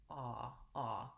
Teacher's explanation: the letter a says vowel ah this is the symbol here my lips are rounded and my jaw is also fairly central